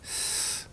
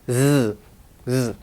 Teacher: So this is z sound. And actually S and Z are very similar. The only difference is the voicing. Everything else about S and Z are the same.